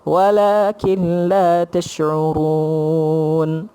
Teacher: Walakin kil. Walaupun nun kat situ, tapi kita masuk dengan lam. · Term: idgham ma'al ghunnah